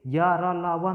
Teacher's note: कम स्पर्श होता है, नाम मात्र स्पर्श होता है, इसलिए इन्हें हम अर्धस्वर कहते हैं। जैसे हम यहाँ समझें अर्धस्वर क्यों कहते हैं इनको, हम अर्धस्वर इसलिए कहते हैं कि यदि हम यहाँ पे उच्चारण स्थान देखें तो यहाँ से वायु जो है हमारी स्पर्श नहीं करती, ऐसे सीधे निकल जाती है, ठीक है।